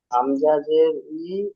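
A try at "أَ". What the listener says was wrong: হামজা জের আছে ভাই, হামজা জাবার আ।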